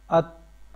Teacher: آپ کی سانس جو ہے وہ جاری ہے اور آواز میں پستی آ رہی ہے